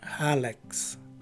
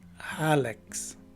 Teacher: The phonetic spelling would tell us that the stress is right in the beginning of the word, and the letter A is a short letter A.